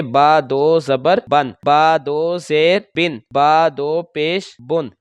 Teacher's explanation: तनवीन को बगैर गुन्ना के फ़ौरन अदा करना है